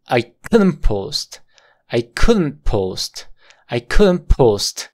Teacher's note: pronunciar aquí porque la regla de la pronunciación te dice que si el sonido de la t está entre dos sonidos de consonantes Entonces el sonido de la t se vuelve muy débil que tiende a desaparecer